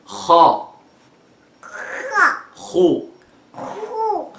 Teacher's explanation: The kha is almost from the same place of the ghain, but it is a little bit closer to the lips, and we don't touch the uvula as much as we do in the ghain. So again, the root of the tongue will touch the uvula or the soft palate like this. · And we find that there's a breath comes with the kha, unlike the ghain